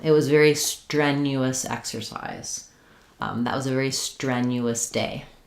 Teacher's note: Because we're going from the rounded oo to the unrounded us, you're going to hear a little w sound in there. So I would write this as stren, you, and then think of the w connecting to the us.